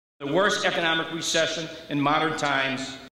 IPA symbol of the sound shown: aj